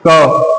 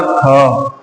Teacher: क में कम हवा निकली तो क क्या हो गया? अल्पप्राण। ख में अधिक हवा निकली। ख हो गया महाप्राण।